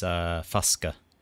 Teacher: Usually the final vowel in a word gets dropped entirely, but there's a few exceptions, and one of them is Fuska, which keeps the last A sound.